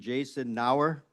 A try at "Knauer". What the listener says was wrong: I do pronounce the K. Knauer.